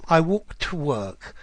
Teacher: there's an ever so slight um d sound at the end of that walk